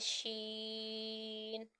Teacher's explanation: کیا جائے گا، مد لازم کا قاعدہ ہو رہا ہے، اور یہ جیم کی طرح زبان کے درمیان اور تالو کے درمیان سے ادا ہوگا